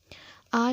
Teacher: आ का जब हम उच्चारण करते हैं तो मुंह पूर्णतः खुल जाता है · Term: विवृत स्वर